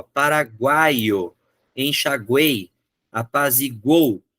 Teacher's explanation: eu tenho duas semivogais e uma vogal no meio Ela gruda as três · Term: tritongo